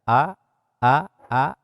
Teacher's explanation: ieu keluarna tina pangkal tenggorokan, titik koro nu beh handap a atanapi alif gitu.